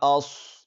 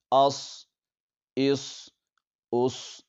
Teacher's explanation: حمزہ صاد زبر اص، اس کو صاد کو ہم نے موٹا پڑھنا ہے کیونکہ یہ حروف مستعلیہ میں سے ہے، اور سیٹی کی طرح تیز آواز بھی اس پر نکلے گی